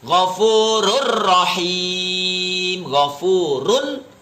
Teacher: idgam bilagunnah itu tidak dibaca dengung tidak dibaca lama